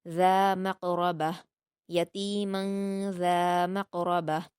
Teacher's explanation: قاف کو پر پڑھیں گے اور قلقلہ کریں گے، را کو بھی پر پڑھیں گے